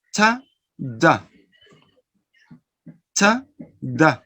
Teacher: They are plosive, but the difference is in the place. These sounds are alveolar, eh? Plosive, alveolar.